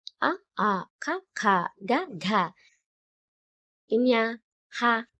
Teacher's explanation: కంఠం నుండి పుట్టే వాటిని కంఠ్యాలు అంటారు